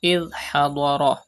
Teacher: Pronounce dod with thicker voice because it is a mustaliya letter.